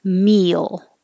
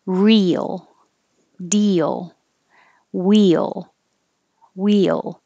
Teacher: your e is very high and then you're sliding down to make your tongue go down and up for the l so that's when a y accidentally happens meal and other words